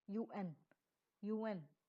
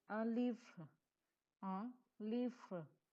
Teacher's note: The pronunciation of un is uh. This is a nasal sound. Imagine you are saying uh, but through your nose.